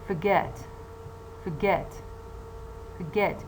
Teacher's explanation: the first syllable is weak because it contains a schwa as a nucleus, while the second syllable, you see the word get, I mean the syllable get, is stronger because it contains a nucleus that is pronounced more prominently.